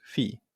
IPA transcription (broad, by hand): ɸi